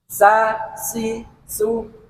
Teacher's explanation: Sin itu ada suara desesis dan harus gigi kelihatan ee nampak giginya seolah ada ketawa seolah-olah itu ada ket meringis